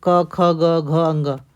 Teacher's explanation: जो क है वो कंठ से निकलते हैं।